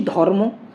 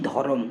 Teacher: দেখো, ধ অ, র ম অ, র আর ম এর মাঝে কিন্তু কোনো স্বরধ্বনি নেই